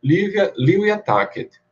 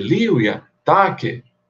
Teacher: a entonação, porque você tem que dar o tom de chamamento. Porque uma coisa é dizer Livia tacet, outra coisa é dizer Livia tace.